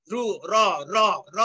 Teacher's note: জিহ্বার অগ্রভাগ দ্রুত কম্পিত হয়ে উচ্চারিত হয় বয় শূন্য র বা ব বিন্দু র। র র র উচ্চারণ করলে দেখবে যে জিহ্বার অগ্রভাগ অনেকবার কম্পিত হচ্ছে, র খুব দ্রুত কম্পিত হয়।